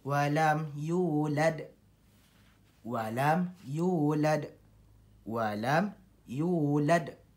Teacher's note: ada lantunan di belakang ataupun di akhir ayat ataupun di akhir kalimah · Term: huruf qalqalah